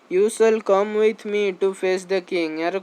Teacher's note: falling tone to command with authority